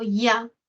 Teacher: el diptongo ya, donde de las dos vocales suena más la A, no suena la I, suena más la A, ya.